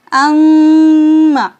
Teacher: मीम मुशद्दद को भी गुन्ना करके पढ़ना है